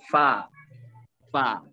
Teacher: Fa ini juga termasuk huruf hamas. Yang kita sebut, yang kita sebutkan ada nafas yang keluar.